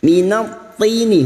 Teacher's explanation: Minat tini huruf ta yang berharakat kasrah. Huruf ta adalah huruf isti'la yang harus dibaca tebal. Tini kasrah diikuti sukun 2 harakat mat tabi'i.